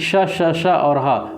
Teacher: इसका उच्चारण कट, तालु, मूर्धा, दंत एवं ओष्ठ स्थानों के स्पर्श से होता है। इनका उच्चारण करते समय मुख्य अवयवों में रगड़ या घर्षण के कारण गर्म वायु उत्पन्न होती है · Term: उष्म व्यंजन